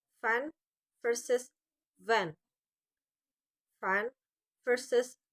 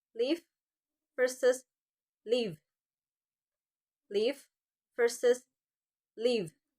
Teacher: Both are produced by placing the bottom lip against the upper teeth.